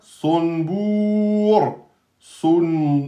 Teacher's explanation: Donc le ra devient soukoun, précédé d'une lettre de prolongation, et donc 2, 4, 6. Le ra est soukoun, précédé d'une damma, et donc il est emphatique.